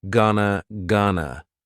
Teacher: Gonna is generally pronounced with the schwa, gonna.